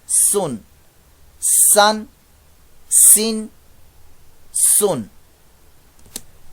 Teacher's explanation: سین ہے، یہ سفیریہ لیٹر ہے، اس کی آواز میں سی ٹی کی آواز پیدا ہوتی ہے